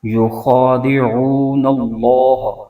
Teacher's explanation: اللہ کے لام کو پر کر کے یعنی موٹا کر کے پڑھیں گے